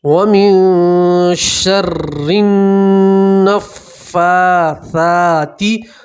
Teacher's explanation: اب را مشدد کے نیچے زیر ہے تو را کو باریک پڑھا جائے گا، پتلا پڑھیں گے